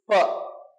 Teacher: 2 lips ஆர்டிகுலேட்டர் ஆனாவே போதும், ஆட்டோமேட்டிக்கா என்ன சவுண்ட் வந்துடும்? ப அப்படின்ற ஒரு சவுண்ட் வந்துடும்.